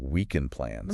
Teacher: the D gets dropped quite a bit, too. Especially after an N and before another consonant.